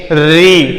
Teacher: अर्थात री का उच्चारण करके देखिए। री अर्थात जो जीभ है तालु के ठीक ऊपर टच करती है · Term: मूर्धा